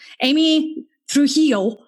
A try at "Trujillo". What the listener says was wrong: That was probably the wrong emphasis on the wrong syllable, but it's okay.